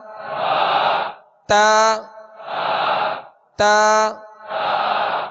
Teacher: مخارج کی لسٹ میں آپ دیکھیں گے تا دال طا کا ایک ہی مخرج لکھا ہوا ہے کہ زبان کی نوک اور اوپر کے دانتوں کی جڑ سے ادا ہوتے ہیں